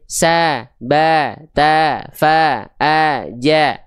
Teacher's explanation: Kalau ada huruf hijaiyah dia berharakat fathah keluarnya vokal a tipis pelafalannya.